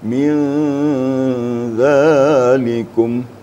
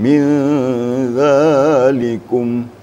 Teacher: Di sini ketemu salah satunya, yaitu huruf zal, min zalikum. Jadi disamarkan atau sembunyikan nun mati ke dalam zal. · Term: ikhfa hakiki